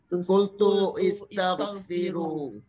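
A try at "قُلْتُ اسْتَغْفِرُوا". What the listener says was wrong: Ya, di surat Nuh ini bacanya kultus taghfiru. Tidak dibaca kultu istaghfiru, tapi kultus taghfiru.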